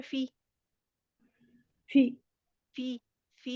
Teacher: जेर को मजहूल नहीं पढ़ना, बीमारी की तरह पढ़े, हमारे की तरह नहीं पढ़े